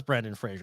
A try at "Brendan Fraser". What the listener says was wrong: Why do you always say Brandon Fraser? It's not Brandon. It's not Brandon. It's Brendan.